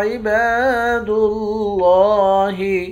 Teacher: پڑھیں گے۔ لفظ اللہ کے لام کے اوپر کھڑا زبر ہے، لفظ اللہ کے لام کو موٹا بھی پڑھیں گے، ایک الف کے مقدار کھینچ کر بھی پڑھیں گے۔